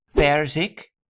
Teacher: So the emphasis is on per and not the final syllable zik.